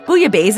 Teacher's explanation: The two l's combine into a y sound, as you'll often find in French words when they're preceded by an i.